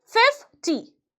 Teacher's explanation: Stress on the first syllable.